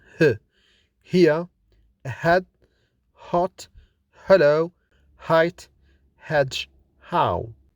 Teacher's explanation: It is kind of breathing out with an audible friction in the vocal cords. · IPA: /h/